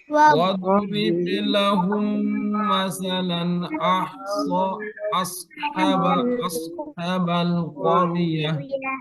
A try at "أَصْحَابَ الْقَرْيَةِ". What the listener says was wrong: এখানে ফাতার পরে যে আলিফ সগর আছে মাদ হবে আসহাবাল আর এই দত যেন ছুটি না যায় ওয়াদ না হয় ওয়াদ না হয় হ্যাঁ واضرب لهم مثلا أصحاب القرية